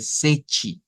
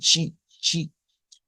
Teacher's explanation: esas letras T cambia un sonido por algo completamente diferente a una T, como lo es una CH